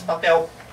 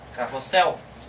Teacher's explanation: esta letra L, quando ela está no final da palavra, no português, nós puxamos para o som de U. A gente diz papel.